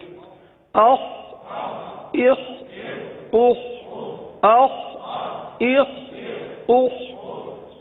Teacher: اب یہ بھی حلق سے ادا ہونے والا حرف ہے، اور حلق کے اوپر والے حصے سے ادا ہوتا ہے، لہذا خا کو حلق سے ادا کریں گے، اور یہ حرف پر ادا ہوتا ہے، لہذا پر ادا کریں گے.